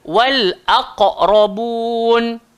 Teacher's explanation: hamzah keluar dekat bawah tekak a. Dia takkan bunyi o.